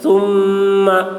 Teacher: یہاں پر میم مشدد ہے، غنہ بھی ہوگا، غنہ کے ساتھ پڑھیں گے